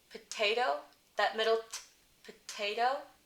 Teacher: If it's the first sound of the word or the first sound of the stressed syllable, like the word potato, potato, that middle t, potato, that's aspirated.